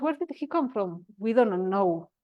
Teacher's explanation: Bajo la frecuencia para terminar el párrafo.